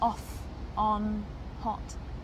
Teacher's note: the vowels are often pure for example the short vowel sound as in off on hot is round and opening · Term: short O sound